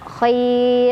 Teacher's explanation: rohnya tetap tipis karena sebelumnya ya sukun. Tapi kalau nggak berhenti, rohnya tebal karena barisnya di atas ya.